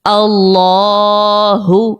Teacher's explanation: اللہ, منہ ہماری بھاری ہو رہی, پیچھے سے زبان اٹھ رہی ہے, ٹھیک ہے, تو اس کو موٹا پڑھیں گے